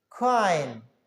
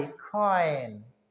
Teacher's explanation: ओ पे एक साउंड शुरू हो जाता है और आई की तरफ ये मूव हो जाता है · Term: diphthong